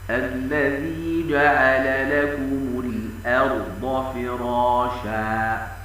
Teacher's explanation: والصواب ان الراء والضاد تفخم لكن باقي الاحرف مستفه